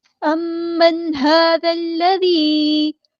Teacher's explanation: میم پہ غنہ زمانی ہو رہا ہے